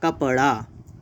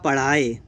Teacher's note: तो उत्क्षिप्त में आता है अड़ा और अढ़ा। कैसे, जैसे हमने कहा कपड़ा, तो कपड़ा कहने पर अड़ा हो गया।